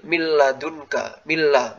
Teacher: Nah, kalau yang ini dilihat huruf setelahnya. Kalau huruf setelahnya lam sama ro itu tanpa gunnah.